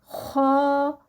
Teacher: और यह जो लेटर है यानी यह जो ख है एक नंबर वन यह मोटा पढ़ा जाएगा और मोटा कैसे पढ़ना है जुबान की जड़ उठेगी और फिर मुंह को हवा से भरेंगे और फिर यह अदा होगा ख और दूसरी बात इसके बारे में यह लिखें कि यह हरूफ हलकी है हलक का सबसे ऊपर वाला हिस्सा है वहां से अदा होगा जैसे ही जुबान जो है वो उसके खत्म होगी और नीचे से हलक जो है वह शुरू होगा।